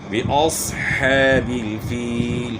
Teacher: صاد جو ہے موٹا ہوگا کیونکہ صاد جو ہے نا موٹے حروف میں سے ہیں، اور حا کی آواز گلے کے درمیان سے نکالنی ہے۔ فیل یہاں جو ہے یا مدہ ہے، یا ساکن سے پہلے زیر ہے تو اس لیے اس کو تھوڑا سا کھینچنا ہے۔